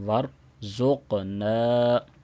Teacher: نون کو 2 سیکنڈ لمبا کریں گے الف مدہ کی وجہ